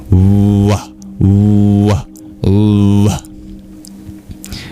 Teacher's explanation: It's transliterated as V-A-M. But the V is actually more of a pure bilabial approximant. That you don't touch your tooth to your lip, but just your lips together, you round them off like a W.